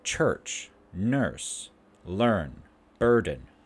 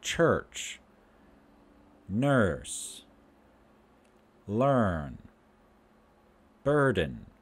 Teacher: So, yes, the front of our tongue, the tip of our tongue, bends backwards. And we spread our lips slightly and let the air out. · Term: high central lax